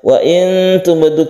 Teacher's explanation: Wa in tubdu kita samarkan dan bertemu dengan ta ini kita sebut ikhfa dan kita panjangkan sedikit